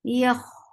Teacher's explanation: For fatha, open your jaws, attach with kha. Kha will get sifa of rakhawa. Yakh, and ra will be heavy too.